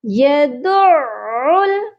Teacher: عین مشدد ہے اور اس کی آواز 2 بار آئے گی۔ یدع، ایک بار دال کے ساتھ، سیکنڈ ٹائم پھر آئے گی عل، یدع الیتیم۔